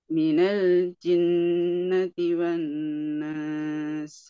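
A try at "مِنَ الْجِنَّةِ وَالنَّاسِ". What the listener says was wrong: Alhamdulillah, ahsan. Insyaallah ya. Keren.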